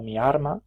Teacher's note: se produce una neutralización entre las líquidas l y r o sea entre la lateral y la percusiva